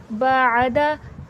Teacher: आइन हुर्फ़ हल्क़ी है, हलक के दरमियानी हिस्से से आइन अदा होगा